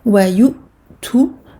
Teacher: Le waw n'est ici qu'un support. Donc hamza sakina, je coupe le son. Je referme d'un coup les cordes vocales.